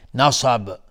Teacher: صاد از حروف استعلا غلیظ تلفظ میشه